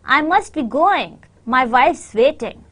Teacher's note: your stress is on going and wife